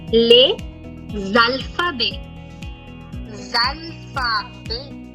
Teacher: the A is going to pull the S sound. So it will become les alphabets.